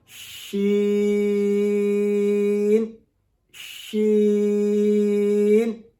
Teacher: ناک میں آواز نہیں جائے گی, ناک میں آواز بالکل بھی نہیں جائے گی. اس کا طریقہ میں نے بتایا تھا کہ اگر ناک کے اندر حرکت محسوس ہو تو پھر ہماری آواز جو ہے وہ ناک میں جا رہی ہے.